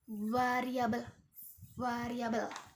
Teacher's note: Nah, selanjutnya yang kedua adalah v. Nah, v ini, yang ini ya, ini merupakan frikatif yang bersuara